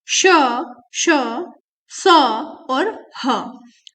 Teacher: इन व्यंजनों के उच्चारण के समय वायु अर्थात हवा मुख से, मुंह से रगड़ खा के ऊष्मा पैदा करती है, गर्मी पैदा करती है, और वो बाहर की तरफ निकलती है, उन्हें ऊष्म व्यंजन कहा जाता है।